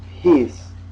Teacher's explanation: The next one looks like pa with an H, and it's pronounced like our English P. When we say peace, there's a ha sound after the pa.